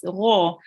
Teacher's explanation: we have to pronounce it thickly with the mouth rounded